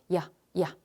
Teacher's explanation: 완전 이가 아닌 형태의 이에 가까운 소리. 이런 게 바로 반모음이야.